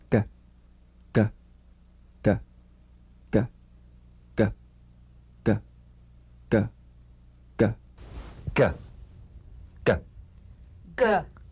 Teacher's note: place the back of the tongue in gentle contact with the soft pallet let the tongue spring away play this drum beat on the springing action of the back